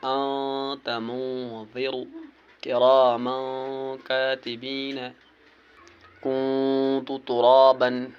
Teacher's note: ان میں سے اگر کوئی حرف آ جائے تو وہاں پر نون کو ناک میں چھپا کر پڑھنا ہے، نو کی زبان تالوں سے ہٹا کر، یعنی جب ہم نون پڑھتے ہیں تو زبان کی جو نوک ہے وہ تالوں سے ملتے ہیں، لیکن جب ہم اخفا کریں گے تو اس وقت نو کی زبان تالوں سے نہیں ملانی ہے بلکہ آواز کو ناک سے نکالنا ہے